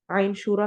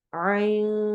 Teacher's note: ایسے ہی آئین شورا میں دیکھ لیں، آئین کر کے نون کی آواز کو چھپانا ہے کیونکہ نون ساکن جو ہے اس کے بعد سین آ رہا ہے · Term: اخفا